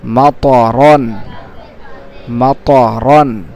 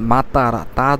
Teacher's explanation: এটা ত মোটা করে সুন্দর করে উচ্চারণ করবেন, ত মা ত, ত জবর ত, মাতরন।